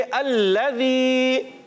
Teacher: लाम मुशद्दद है, ज़रा रुक कर अदा करेंगे।